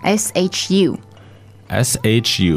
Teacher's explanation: first tone flat and high